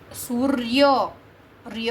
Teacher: સૂર્ય ર્ય હું બોલું છું ને તો પાછળ અનો ધ્વનિ નીકળે છે, એટલે અ થયું અ, અને અહીંયા અસ્ત આપેલું છે તો અ પ્લસ અ કરો તો સૂર્યા થઈ જાય.